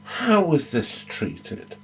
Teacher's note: a rising intonation to show the beginning of the next section